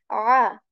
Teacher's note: Ayn letter, which is a letter of throat, comes from the middle portion of your throat